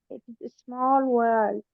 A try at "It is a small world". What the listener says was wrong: I need to hear the ending of world. Can you try one more time? I think Zoom is cutting off the end of it because I think you're doing it, but I can't hear it.